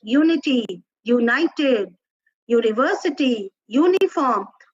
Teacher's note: because the U over here has a consonant sound of U, Y-U sound, not the vowel sound of U. The vowel sound of U is as in umbrella.